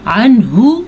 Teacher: نون کو ظاہر کر کے پڑھنا ہے کیونکہ یہاں پہ اظہار کا قاعدہ ہو رہا ہے